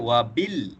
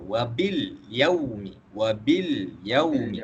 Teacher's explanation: Alif lam qamariyah ini apabila kita baca lam itu dengan jelas